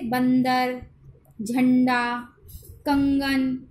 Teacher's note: अनुस्वार होता है इनका उच्चारण नाक से किया जाता है।